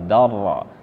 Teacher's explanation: Dar ke ro tanpa memakai gunah tanpa didengungkan ya Dar jadi tetap dia tafkhim karena ronya berharakat fathah dan harakat sebelumnya juga berharakat fathah jadi tafkhim kita tebal Dar ro su beda · kita langsungkan Dar ke ro tanpa memakai gunah tanpa didengungkan ya Dar jadi tetap dia tafkhim karena ronya berharakat fathah dan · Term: idgam bila gunah